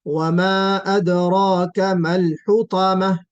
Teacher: वमा अदराका में रा को पुर पढ़ना है मोटा